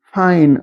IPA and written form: fain’ (find)